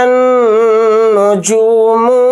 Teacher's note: یہاں پر را کو موٹا پڑھیں گے کیونکہ را کے اوپر زبر ہے، اور یہاں نون کے اوپر تشدید ہے تو اس کے اندر غنہ کر کے پڑھیں گے